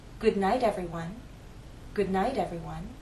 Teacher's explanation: flap T as in little will consider the phrase good night if it's followed by an unstressed vowel sound that final T in night changes to a flap T